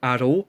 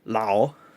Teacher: Intervocalically, it's often ra, for example, aro, but when it's the beginning of a word, it's often la, for example, lao.